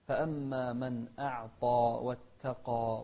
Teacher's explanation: نوضح الهمزة ونفخم الطاء والألف بعدها